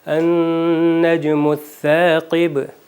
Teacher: یہاں پر النجم الثاقب میں ثا کے بعد الف آیا ہے، تو یہ ان حروف میں سے نہیں ہے کہ جو موٹا پڑھا جائے، تو بجائے اس کے کہ کہیں ثاقب، اس کو نارمل ہی پڑھا جائے گا، النجم الثاقب۔